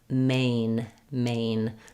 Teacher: a little more closed main is a little more open but it's a diphthong so I start at the a position and then I close as I'm saying main main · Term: gliding vowel